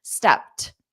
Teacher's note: if I don't have any words coming after it, I'm going to push out the air because it doesn't matter if I take a pause. Stepped. So, that's why I said you might hear a soft t, but native speakers can also just change that to a soft d.